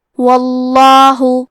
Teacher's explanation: کلمت واللہ کیونکہ حرف الواو پہ زبر ہے تو لفظ الجلالہ مطلب کلمت اللہ کے لام کا حکم ہے تفخیم تو ہمیں حرف اللام کو موٹی آواز میں پڑھنا ہے